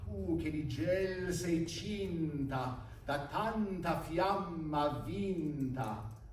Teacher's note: A cluster of consonants, a double consonant or a cluster of different consonants, right after the accented vowel is a really idiomatic way of making an accent in Italian.